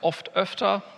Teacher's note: Sie bewegen auch bei oft zu öfter, dieser Komparativbildung, Ihre Zunge ein Stückchen nach vorne. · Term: Umlaut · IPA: [ʔɔft] – [ʔœftɐ]